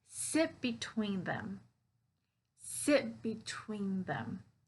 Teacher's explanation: notice here when i say sit between them that sit i'm not pronouncing that t so i'm connecting sit to be twinkie and again that stress